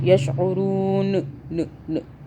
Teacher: واو مدہ کا حرف آ رہا ہے. را واو پیش رو بن رہا ہے، مطلب را کو ہم کھینچ رہے ہیں، مدہ کر رہے ہیں، مدہ ہو رہا ہے یہاں پہ.